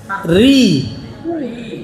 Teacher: Kemudian ketemu huruf ro yang berharokat kasroh, tasydid kasroh. Artinya apa? Harus dibaca tipis.